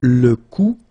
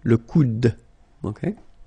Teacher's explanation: you don't insist on this final E, it only gives you the sound of d at the end